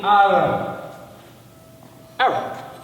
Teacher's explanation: It's a long A. Ain is like a guttural sound, like a glottal sound. Ra is a R and B, Ba is a B.